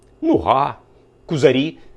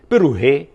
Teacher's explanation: маємо помірне укання коли ненаголошене о прямує до у